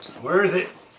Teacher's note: When we're speaking quickly, the vowel sound in the middle of where can become de-stressed to where it almost sounds like were